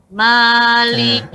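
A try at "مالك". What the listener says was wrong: Bukan ma, tapi ma. Beda suara ma, itu kita nggak tipiskan. Terbuka tapi nggak tipis. Ma. Tapi kalau kita tipiskan jadinya ma. Maliki yau.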